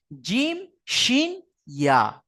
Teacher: এই জিহবা আছে, জিহবার মাঝখান, জিহবার মাঝখান তার বারবার উপরের তালু, জিহবার মাঝখান তার বারবার উপরের তালু সাথে লাগিয়ে উচ্চারিত হবে জিম শিন ইয়া।